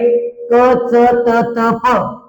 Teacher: यांच्यामध्ये कोणत्याही प्रकारचा ह चा उच्चार होत नाही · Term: अल्पप्राण